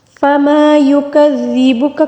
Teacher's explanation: کاف کو باریک پڑھیں گے، زال کو بالکل نرمی سے پڑھیں گے